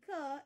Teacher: ka is made by pressing the back of the tongue against the soft part of the roof of your mouth known as your velum so it's a velar sound